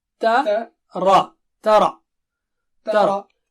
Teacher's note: تا پتلا ہے اور را موٹا ہے